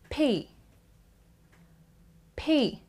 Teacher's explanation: When you say P, there is so much gush of air from your mouth. You actually build up air in your mouth when you close it. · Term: unvoiced consonant